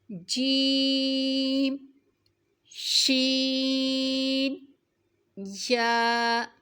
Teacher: زبان کے درمیان اور تالو کے درمیان سے ادا ہوتے ہیں۔ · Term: حروف شجریہ